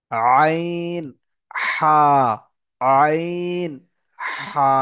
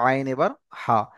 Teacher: তাহলে কণ্ঠনালীর মাঝখান দিয়ে চেপে উচ্চারণ হবে আইন এবার হা